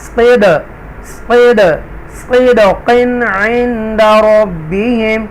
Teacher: دال حروف قلقلہ میں سے ہے دال، تو لہٰذا یہاں پر ایکو ساؤنڈ جنبش کے ساتھ آپ پڑھیں گے